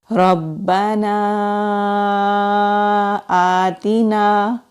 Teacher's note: حمزہ کے اوپر کھڑی زبر ہے، کھڑی زبر کو ایک الف کے برابر کھینچ کر پڑھیں گے